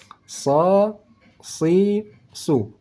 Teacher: letak pangkal lidah naik ke langit langit saat kita membaca huruf sad makanya bunyi suaranya desis anginnya lebih tebal